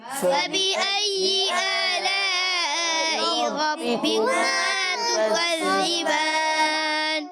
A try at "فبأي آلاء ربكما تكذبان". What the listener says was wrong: تكذبان زا نہیں پڑھنا.